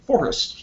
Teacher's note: forest is it's a trochaic word. The emphasis is on the first syllable. And that means that you can't just rhyme the last syllable, which is what was attempted in the poem.